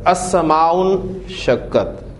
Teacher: اس سے پہلے السماء کو لگائیں، السماء حمزۃ الوصل ہے، ملا کر پڑھا جائے گا تو لکھنے میں رہے گا، پڑھنے میں نہیں آئے گا